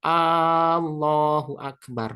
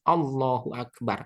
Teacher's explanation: harus dipendekkan Hamzah lafaz Allah